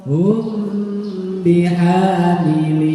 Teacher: sama jadi ketemu mim sama ketemu ba disamakan cara membacanya Ya didengungkan selama satu setengah Alif atau tiga harakat mingkem saja dua-duanya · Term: Ikhfa Syafawi